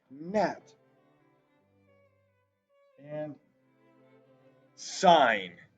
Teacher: you don't really hear the g you just hear the n